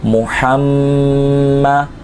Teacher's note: یہاں میم مشدد ہے، تو یہاں پہ ہم کیا کریں گے، ایک الف کے برابر اس کے غنہ کو کھینچیں گے